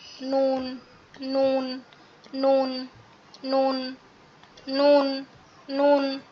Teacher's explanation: জিহ্বার আগা তার বরাবর উপরের তালুর সঙ্গে লাগিয়ে। এটা অনেকটা হচ্ছে বায়ের মতো।